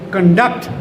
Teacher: when it is verb, stress shifts to second syllable